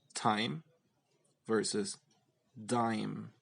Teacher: For the T sound, there's no vibration of the vocal cords, and for the D sound, there is vibration of the vocal cords.